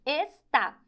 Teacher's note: Última sílaba mais forte, então é uma palavra oxítona